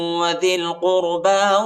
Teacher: ذال کو لام کے ساتھ ملائیں گے، یا اور الف نہیں پڑھا جاتا، یا اور الف پر حرکت نہیں ہے، اور قاف کو را کے ساتھ ملائیں گے اور پر پڑھیں گے، ٹھیک ہے، دونوں حرفوں کو.